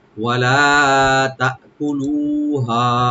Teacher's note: তা তাআকুলু, তাটাকে ওপেন রেখে হামজাকে অবশ্যই রাইট দিবেন, কিন্তু কলকলা করবেন না। তাকুলুহা, কাবে কোনো টান নাই, লু একালে টান আছে, আর হা এখানে 3 আলিফ টানবেন।